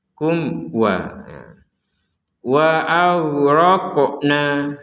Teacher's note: Ini juga mim sukun bertemu wawu dibaca dengan jelas.